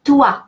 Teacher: And the final S as the final consonant is silent. And toi, OI in French is a rule of pronunciation, and it's pronounced wa